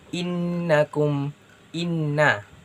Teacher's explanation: maka itu harus ditekan inna dan ditahan sepanjang 2 harakat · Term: tasydid